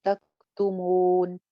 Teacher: تکتمون نہیں, تکتمون. مو مو واو مدہ کی آواز کو ناک میں نہیں جانے دینا